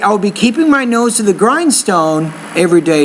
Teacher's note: once you get to the end of the sentence your tone needs to drop · if you want to pause after grindstone then the tone goes up